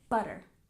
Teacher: Stress the first syllable, butter.